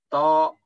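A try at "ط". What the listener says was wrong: Mulutnya diwanti-wanti, jangan monyong. Po. Jangan dimonyongkan. Po.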